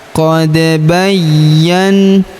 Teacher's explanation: huruf ya berharakat tasydid kita tahan dan tekan.